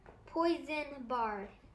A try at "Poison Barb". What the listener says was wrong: Barb. You said bard.